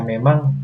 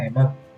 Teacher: Yang kedua adalah penghilangan fonem awal. Misalnya, dari kata memang menjadi kata emang.